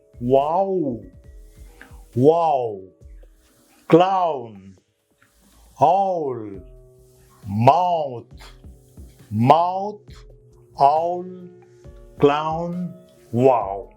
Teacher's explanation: this sound is represented by this phonetic sound a and u together